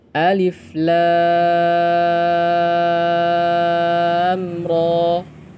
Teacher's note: Kemudian ro, ro termasuk dalam kategori dua harakat, ya. Jadi alif sama sekali tidak panjang. Lam enam harakat, ro dua harakat.